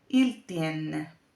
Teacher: no tiene ningún sonido nasal, tiene la E abierta que viene representada con este símbolo porque va delante de la doble N.